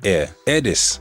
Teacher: sometimes the H at the beginning of a word gets dropped. This isn't always the case, but sometimes you can hear it being dropped.